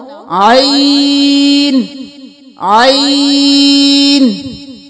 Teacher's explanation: عین، گلے کے بالکل درمیان سے حمزہ کی آواز نہ آئے، عین نہ ہو، عین عین۔